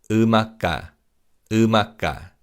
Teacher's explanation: And in terms of pronunciation, the bachim in carries over and in a is silent and in ka is pronounced as a tense consonant